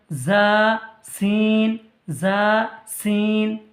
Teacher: জিভের আগা সামনের ওপর নিচের দুই দাঁতের মাঝখানে হইতে উচ্চারিত হয়